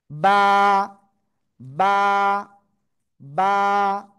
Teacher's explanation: বা। দুই ঠোঁটের ভিজা অংশ থেকে এ অক্ষরটা উচ্চারণ হবে। এক আলিফ টান হবে।